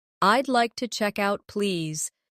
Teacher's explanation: Notice the smooth link between check and out.